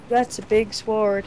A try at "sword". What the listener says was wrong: You emphasize the W in sword.